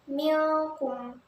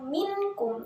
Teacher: suara nun atau tanwin masih tetap terdengar, tetapi samar antara idhar dan idghamnya. Kemudian bersambung dengan makhraj huruf berikutnya.